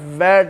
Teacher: अब वो sounds which are produced by upper teeth and lower lip, upper teeth and lower lips, these sounds are called labiodentals